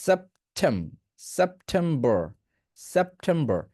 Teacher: এখানে যে উচ্চারণ করবেন সেখানে এস এর সাউন্ডটা পাতলা করতে হবে